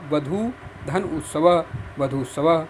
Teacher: ऊ ह्रस्व है और उसके बाद दीर्घ ऊ है, तो मिला के दीर्घ हो गया।